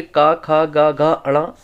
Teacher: कंठ में आपके का, खा, गा, घा, अणा, ये सभी कंठ में होंगे